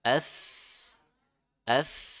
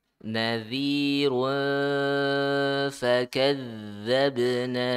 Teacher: Ikhfa makhrajnya bibir bagian dalam yang di bawah nempel ke gigi seri yang atas ya. Gigi seri yang atas.